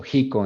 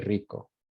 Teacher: the velarización de la R múltiple, la vibrante múltiple. So jico en vez de rico.